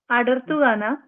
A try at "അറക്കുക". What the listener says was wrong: അയ്യോ, അറക്കുക. റായാണ്. റാ.